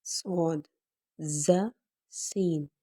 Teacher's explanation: ان حروف کو سیٹی والے حروف کہا جاتا ہے، اور ان کی آواز میں ایک سیٹی کی آواز آتی ہے، اور سختی سے پڑھے جانے والے الفاظ ہیں، اور صاد اس میں موٹا پڑھے جانے والا لفظ ہے اور باقی دونوں باریک۔